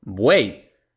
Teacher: a la estructura de la palabra es uei entonces buey y las tres vocales se pronuncian en la misma sílaba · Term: triptongo